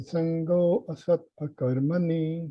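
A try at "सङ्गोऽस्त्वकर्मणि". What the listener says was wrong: Sangostva Karmani. Yeah, it's all together. Very nice, though.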